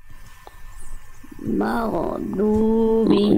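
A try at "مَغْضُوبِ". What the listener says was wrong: Dilatih lagi ya, masih mago. Masih kita ada masih ada bunyi go, mago, bukan mago tapi maghdubi.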